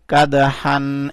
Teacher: اس دال کو بھی اٹھایا دال کے اوپر کلکلا کیا